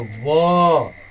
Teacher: दांत और ओष्ठ। दांत और ओष्ठ मिल करके यह उच्चारण होता है व।